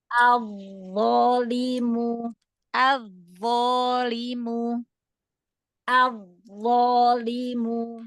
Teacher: Gesek sedikit biar khoahnya terdengar.